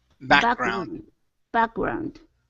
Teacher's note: So our stress is at the beginning of the word.